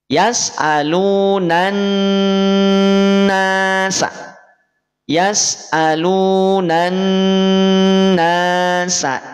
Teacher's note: cara bacanya langsung masuk ke Nun setelah alif lam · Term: alif lam syamsiah, alif lam samsiyah